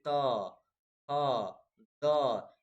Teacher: आपका जीभ जाकर दांत में सटेगा